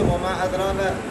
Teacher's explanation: ہے، وما ادراک یہاں پر انہوں نے کیا کیا، قصر کیا، دونوں راویوں کے لیے قصر ہے، یعنی ایک الف کے برابر مد کر